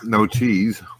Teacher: So there's like a little bit of a diphthong there, like cheese, like a little up down.